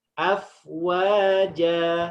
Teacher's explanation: Fathatain ketika kita wakofkan menjadi panjang 2 harokat saja.